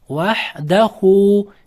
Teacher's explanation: Ikki harakat cho'z bo'qilish vahdahu deb hu deb ikki harakat cho'ziladi.